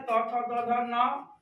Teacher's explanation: जिह्वा जो है हमारे दांत को स्पर्श करता है इसके उच्चारण में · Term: दंत वर्ण